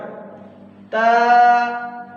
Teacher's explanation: تا، تا، زبان کی نوک اور اوپر والے دو دانتوں کی جڑ